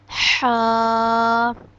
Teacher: ہا ہمارے حلق کے بیچ سے ادا ہوتا ہے، حلق کے درمیان سے۔ ہمارے حلق کے 3 حصے ہیں، ایک حصہ جو منہ کی طرف ہے، ایک درمیان میں، اور ایک حصہ جو سینے کی طرف ہے۔ · ہا کو بھی ہم ایک الف کے برابر لمبا کرتے ہیں۔